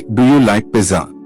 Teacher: Your voice should rise at the end.